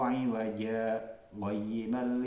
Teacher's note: Jadi berhenti pada lafaz iwaja, kemudian dilanjutkan dengan qayyima tanpa mengambil nafas. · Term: saktah